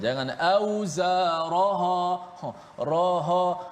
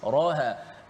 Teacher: Ra dengan ha sama tebal. Sepatutnya ra yang tebal. Ha nipis.